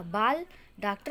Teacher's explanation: जो आ उच्चारित होता है वह आ और औ के बीच की ध्वनि है। अंग्रेजी शब्दों में शुद्ध उच्चारण करने के लिए केंद्रित हिंदी निर्देशालय ने इसको आ को भी स्वरों में शामिल करने के लिए सिफारिश की थी।